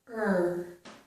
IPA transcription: ɜɹ